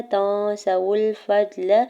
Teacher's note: تا کے زبر کو نون ساکن کے ساتھ ملاتے ہوئے اخفا کریں گے